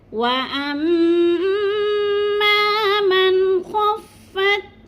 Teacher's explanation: من پہ اخفا نہیں کرنا، ادھر اظہار ہو رہا ہے